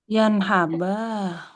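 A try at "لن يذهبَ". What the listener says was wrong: Bukan yadhab. Itu kan pakai sukun. Yadhab pakai sukun. Harusnya pakainya fathah. Lan yadhaba.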